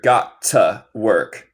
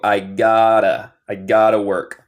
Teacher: Y nota mi acento. Yo digo los T's más como R.